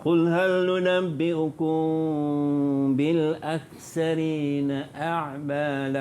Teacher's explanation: ikhfa syafawi ni bacaannya mesti dengung. Dengung dengan kadar 2 harakat. Dan bibir atas, bibir bawah agak-agak bersentuh je. Bibir atas dengan bibir bawah.